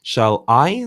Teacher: shall is unstressed i is stressed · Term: iambic pentameter